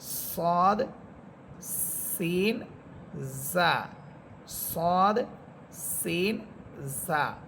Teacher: এই তিনটা হরফ ঝিঝি পোকার মত আওয়াজ হবে · সদ হরফের আরেকটা সিফাত বলেছিলাম, সেখানে 3টা হরফ ছিল, সদ, সিন, জা, এই 3টা হরফ ঝিঝি পোকার মতো আওয়াজ হবে